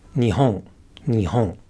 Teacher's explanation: the next pattern is called the naka de Kaap pattern and in this pattern the pitch starts low goes high and then goes down again within the word